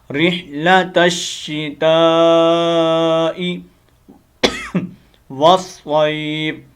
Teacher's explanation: تا کو آپ نے آگے شین سے کنیکٹ کرنا ہے، الف لام کو چھوڑ دینا ہے